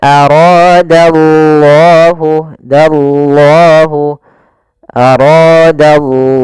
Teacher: lafal allahnya tebal yaitu lafzul jalalah. Kemudian dia juga termasuk mad thabi'i.